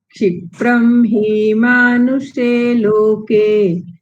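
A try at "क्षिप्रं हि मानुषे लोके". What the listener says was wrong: હવે ક્ષિપ્રમ હી દીર્ઘ નથી.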